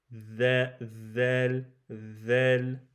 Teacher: le zel c'est l'extrémité de la langue en contact avec l'extrémité des incisives supérieur les deux dents de devant on sort la pointe de la